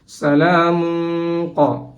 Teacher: Here the qaf harf came after the tanween and the hukum is ikhfa. We have to ikhfa here.